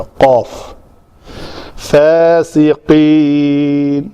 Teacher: لوتھڑا جو لٹک رہا ہے اس کے ساتھ بالمقابل تالو کے ساتھ لگے تو قاف ادا ہوتا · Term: قاف کا مخرج